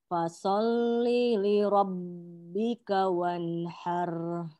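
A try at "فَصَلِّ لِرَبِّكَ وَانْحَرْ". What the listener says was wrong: Oke, baknya jangan terlalu lama. Fasholli li rabbika wanhar. Oke, sekarang tinggal fa-nya. Tekan dengan baik. Fa. Fasholli.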